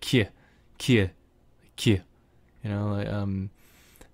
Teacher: But it can also have a palatal k, which is kind of like a little y in there.